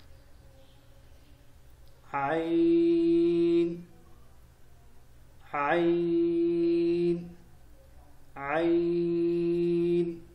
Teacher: گلے کے درمیان سے ادا ہوگا خلق کے بیچ سے